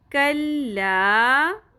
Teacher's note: کیف باریک ہوگا, قوف کی طرح نہیں ادا کرنا